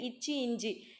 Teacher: இருமைகளும் நாவின் இடைப்பகுதி நடு அன்னத்தின் இடைப்பகுதியை பொருந்துவதால் உருவாகிறது